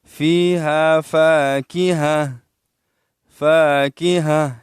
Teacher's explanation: وقف کی حالت میں گول تا سے ہاں بنائی جاتی ہے۔